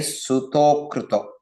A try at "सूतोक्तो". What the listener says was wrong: No, Sutkra, there's no ear sound there. Sutokto. Okay, there's no ear sound there.